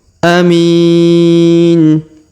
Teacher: Huruf mi kita panjangkan 2, 4 atau 6 harokat karena di depannya terdapat ya sukun